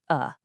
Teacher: it's just a really weak, kind of lazy, unstressed vowel sound. It sounds like a soft uh that symbol you see there, the upside down e, that's how linguists write it. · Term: schwah